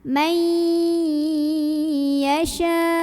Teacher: Idgham itu artinya masuk atau lebur ya. Artinya yang awalnya nun sukun itu bunyi man, nggak lagi man tapi mai, langsung masuk ke ya. Sambil kita dengungkan dulu, jadi bunyi ai-nya tahan. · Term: idgham bigunnah